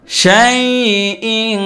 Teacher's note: তানবিনের পরে কাফ আসছে, কাফ হলো ইখফার অক্ষর, তো নুন সাকিন অথবা তানবিনের পরে যদি ইখফার কোনো একটা অক্ষর আসে তখন এখানে ইখফা গুন্না হয়। তো অতএব এই তানবিনের উচ্চারণটা নাকের ভিতরে নিয়ে এক আলিফ গুন্না করে পড়তে হবে।